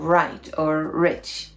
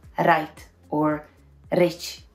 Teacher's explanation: In English, the R is pronounced without the rolling vibration on top of your mouth.